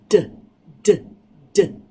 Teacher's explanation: And here with the d sound, the tongue is touching the back of the alveolar ridge, but there is voice coming out.